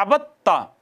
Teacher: जैसे अबद ता, दाल और ता इकट्ठे आए थे, दाल साकिन थी, ता मुतहर्रक थी, दाल को ता में इदगाम कर दिया